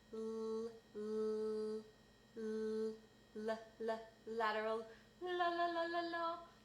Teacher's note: the consonant L is made on your alveolar ridge · So a lateral consonant is made when the tip of your tongue touches the alveolar ridge, and your tongue is kind of broad, and the sound escapes over the side, so it escapes laterally